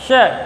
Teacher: दांतों के अंदर की ओर अंदर घुमाते हुए इसका उच्चारण करेंगे श तो यह मूधन्य स कहलाता है और यह जो स है इसे हम दंत्य स के रूप में कहते हैं।